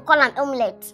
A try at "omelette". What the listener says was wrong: it's pronounced as omelette, not omelette. This E is silent. Let's assume there is no E here. So it's pronounced as omelette.